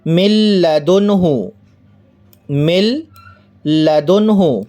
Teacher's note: مل لدنہ، مل لدنہ، یہاں ہم دیکھیں نون ساکن ہے اور نون ساکن کے بعد لام ہے، نون ساکن کے بعد، اور قاعدہ ہم پڑھ چکے ہیں کہ نون ساکن یا تنوین کے بعد را یا لام میں سے کوئی حرف ہو، یہاں نون ساکن کے بعد لام ہے تو ہم بلا غنہ، بغیر غنے کے ادغام کریں گے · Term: ادغام بلا غنہ